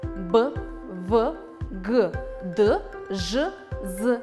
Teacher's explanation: Голосовые связки дрожат, слышен голос и шум. Значит, это звонкие согласные звуки.